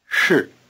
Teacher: 是 To make this R sound, you have to curl the tip of your tongue back. The SH part of 是 is also pronounced with the tip of the tongue curled back in what we call the retroflex position.